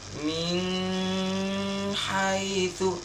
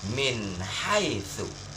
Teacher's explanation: Min haitsu, jelas bacanya, tak boleh tak jelas, tak boleh didengungkan. Ya, yang salah membacanya itu kalau didengungkan. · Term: izhar